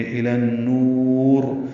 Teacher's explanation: غنہ ہوگا، نون مشدد ہے اس لیے غنہ ہوگا، الی النور، وقف مد عارض السکون ہے، نون کو لمبا کریں گے، را کو پر پڑھیں گے